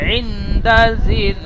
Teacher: এই নুন সাকিন গুন্না হবে, নুন সাকিনের পরে দাল এসেছে ইকফার